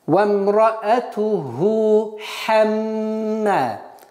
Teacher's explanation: И удерживаем назализацию в размере двух огласовок и ударение в размере двух огласовок. · так как после ха встречается другой гортанный звук ха, нужно обращать внимание и их разделить